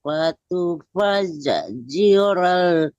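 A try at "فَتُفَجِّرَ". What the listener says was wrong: Ya, fatufat itu kan jimnya tasdid ya Bu ya. Kita tahan tapi jangan diputus ya, jangan fatufajji, nggak boleh itu, nggak boleh dipantulkan, nggak boleh diputuskan jim tasdid ya. Apapun huruf yang tasdid ditahan aja, tapi jangan diputuskan suaranya.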